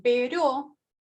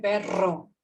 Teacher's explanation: el ápice de la lengua toca con los alvéolos, una sola vez en pero, más de una vez en perro. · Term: vibrantes